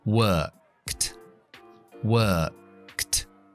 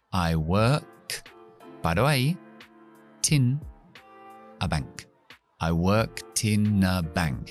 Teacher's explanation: Voy a hacer un linking, un enlazamiento desde la T, que es una D, pero es pronunciada T, a la I de in